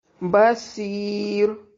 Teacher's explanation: سی یائے مدہ ہے اور را کو باریک پڑھیں گے وقف کی صورت میں